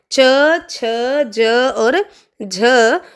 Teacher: च, छ, ज और झ आपके तालव्य भी होते हैं और स्पर्श संघर्षी भी होते हैं।